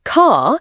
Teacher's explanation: In standard British Received Pronunciation, R is not pronounced at the end of a syllable or before consonants. Example, car sounds like car. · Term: non-rhoticity